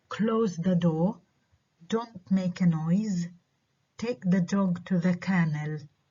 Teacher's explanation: الكوماندز بنعرف إنها فيها falling intonation.